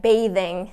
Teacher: has that th and then the Ing and it will always be voiced in this situation